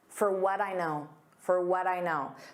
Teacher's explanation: So for becomes an unstressed for. We don't pronounce that D on what. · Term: unstressed fur